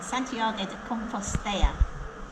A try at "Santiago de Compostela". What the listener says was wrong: It's not got two L's, it's not a Y.